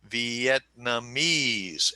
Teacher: say Vietnamese and the accents on the 4th syllable. So that is a 4-4 word.